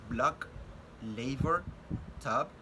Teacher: We have the sound B, which is a voiced bilabial stop